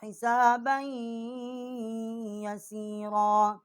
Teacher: با کو ہم نے یا کے ساتھ مشدد کیا ہے اور غنہ کیا ہے